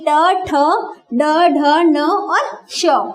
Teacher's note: मूर्धा से बोले जाने के कारण इन वर्णों को हम क्या कहते हैं? मूर्धन्य वर्ण कहते हैं।